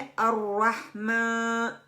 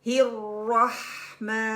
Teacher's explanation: मीम की आवाज को नाक में ले जाकर पढ़ने से बचना है।